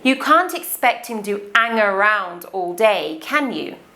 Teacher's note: pronounces the word hang without the letter H. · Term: Not pronouncing the letter H